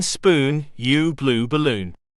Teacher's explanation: Hollow right pointing triangle U, as in spoon, U, blue, balloon. This vowel is towards the back and is a close sound. The lips are only moderately rounded.